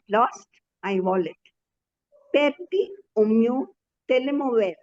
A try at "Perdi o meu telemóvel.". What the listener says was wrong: No, not telemóvel. It is telemóvel. See, there is an accent there on the mo. Perdi o meu telemóvel.